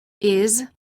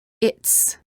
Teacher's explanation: Make sure that you pronounce the following word pairs differently. The first word contains just a S or Z sound, and the second word contains a T and S sound.